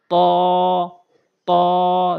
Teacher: জিহ্বার আগা দুই দাঁতের গোড়া।